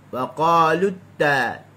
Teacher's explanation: Okey, dia mesti waqalut. Okey, apabila hujung lidah kita bertemu dengan gusi dalam keadaan yang sempurna, yang habisu fihi nafas, menyebabkan nafas ataupun suara kita tertahan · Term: sifat syiddah